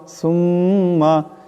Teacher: এখানে মিমের উপর তসদিদ একার পরিমাণ গুন্না হবে